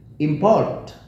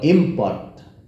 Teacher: Tulisannya sama, suaranya sama, tapi yang membedakan adalah penekanannya. Kalau ditekan menjadi kata benda, kalau landai biasa itu menjadi kata kerja.